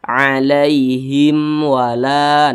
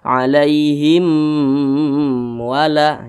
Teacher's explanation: Akan tetapi kalau ada mim sukun nih seperti ini nih, tidak berjumpa dengan huruf ba, tidak berjumpa dengan huruf mim di depannya, maka semua hukumnya namanya izhar syafawi. Karena dia izhar maka dibaca jelas, tidak berdengung. Jadi jangan ditahan atau jangan dipanjangkan.